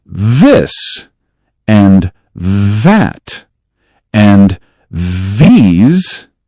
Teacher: For the th in this and that and these, make a soft buzz with your voice as the air moves. Do not push hard.